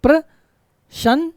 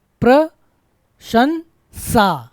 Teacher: पहले क्या आएगा पहले तालव्यसा और फिर आएगा दंतसा है ना पहले क्या आएगा तालव्यसा तालव्यसा फिर दंतसा प्रशंसा है